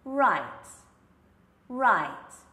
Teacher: I'm actually pushing my lips forward in a very rounded position. And as for my tongue, it's curving back. So it's very much the opposite of the L.